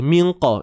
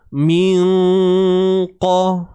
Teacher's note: Pangkal lidah tuan-puan. Pangkal lidah ni akan naik ke lelangit. Itu untuk makhraj huruf qaf.